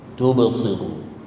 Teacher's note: Tuba memang dia ada lantunan ataupun kita sebut mudah ada echo sikit bunyi tu kan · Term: qalqalah sughra